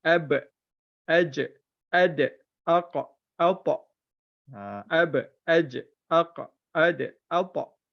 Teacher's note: Ba, bila mati je 5 huruf ni kena qalqalahkan.